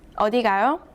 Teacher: read the last syllable with a rising tone